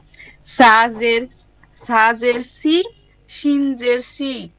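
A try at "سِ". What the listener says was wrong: এটার উচ্চারণটা হবে সাজের সি। সি, এটাতে সিটি আসবে না, সিটি আসবে না। জিহ্বার ডগা, সামনের জিহ্বার ডগা, সামনের উপরের দাঁতের আগা, জিহ্বার আগা, দাঁতের আগা হালকা স্পর্শ হবে, সাজের সি।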